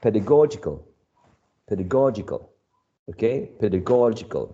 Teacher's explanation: pedagogical is stressed right on the third syllable